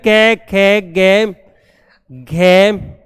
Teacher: ये सारे वर्ण आपके कंठ कहलाते हैं। कंठ ध्वनि, कंठ का मतलब गले के द्वारा इनका उच्चारण होता है।